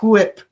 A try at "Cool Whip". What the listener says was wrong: Why you got to put so much emphasis on the H there? Cool whip.